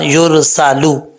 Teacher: سین میں سیٹی آئے گی کیونکہ حروف صفیریہ میں سے ہے